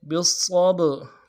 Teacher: نو واستعینوا بالصبر، با کو صاد کے ساتھ ملانا ہے، صاد موٹا حرف ہے، موٹا کریں گے، اور صاد کے اوپر تشدید ہے، زور دیں گے، صاد کو با کے ساتھ ملانا ہے۔ با جب ساکن ہو تو قلقلہ ہوگا، حروف قلقلہ میں سے، تو قلقلہ کریں گے۔ بالصبر، را کو باریک ادا کریں گے۔